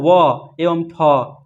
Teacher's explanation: इसमें दंतस्थ का प्रयोग हो रहा है। दंतस्थ क्या होता है? तो दांत एवं ओठ आता है।